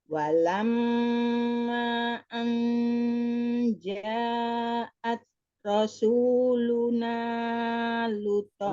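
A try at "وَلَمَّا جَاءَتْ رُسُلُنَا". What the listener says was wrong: Rusuluna, bukan rasuluna, enggak ada panjang. Walamma ja'at rusuluna.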